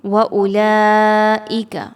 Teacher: آگے دیکھیے وَأُولَئِکَ، اگین حمزہ پر پیش ہے، اس کی ادائیگی کی جائے گی، واو کی ادائیگی نہیں کی جائے گی، واو خالی ہے۔ لام کو 4 سے 5 حرکات کے برابر لمبا کر کے پڑھا جائے گا، مد واجب متصل ہے